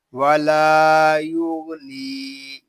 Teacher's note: یا غین پیش یو. غین یہ حروف مستعلیہ میں سے ہے، اس کو پوری یعنی موٹا پڑھیں گے. نون یا زر نی، ولا یغنی.